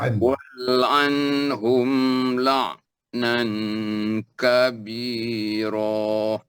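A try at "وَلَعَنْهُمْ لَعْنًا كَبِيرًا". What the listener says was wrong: oh sedap sedap sedap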